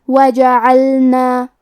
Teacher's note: کلمت وجعلنا میں واو پہ جیم پہ اور عین پہ تینوں پہ زبر ہے تو ہم یہ تینوں زبر کو برابر سے ادا کریں گے